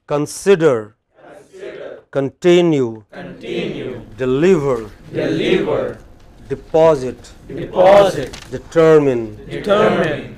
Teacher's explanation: large number of frequently occurring verbs in english which have main stress on the pre-final syllable